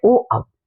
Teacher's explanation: कंठोष्ठ्य वर्ण होते हैं जो कंठ और होठों से बोले जाते हैं।